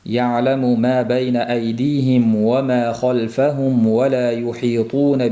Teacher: Mim bilan ovni maxraji bitta. Ikkalasi ham labdan chiqadi. Maxraji bir bo'lganligi uchun bu mimni to'la aytmasdan vovga labimiz o'tib ketish holati uchrab turadi. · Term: sukunli mim